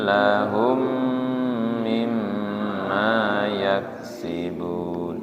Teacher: Lahum dengung karena mim sukun ketemu mim. Mim dengung lagi karena mimnya bertasydid ya. Lahum idgham mutamasilain.